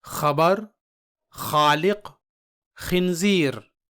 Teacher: इसे अदा करते वक्त हल्क में थोड़ा दबाव डालना होता है। जिसकी वजह से हल्क से थोड़ी खर्राटे की आवाज निकलती है।